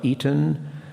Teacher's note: there's a consonant there at the end which becomes syllabic that is to say there is a schwa there which has